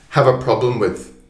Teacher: The weak sounds are have a, have a problem, have a problem with. So it's joining together. We call this connected speech.